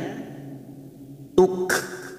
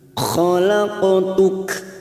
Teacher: Hati-hati, ini dua huruf yang berdekatan makhrajnya. Namun huruf kaf ini bukan qalqalah, tetapi mempunyai sifat hamz. Pada saat diwakafkan maka bunyinya tuk.